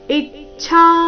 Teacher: ಇಚ್ಛಾ ಈ ಮೇಲೆ ಆಘಾತ ಛ ಮಹಾಪ್ರಾಣ ದೀರ್ಘ ಹೇಳಿದ ನಂತರ ಅದರ ಮೇಲೆ ಸಹ ಆಘಾತ ಬರಬೇಕು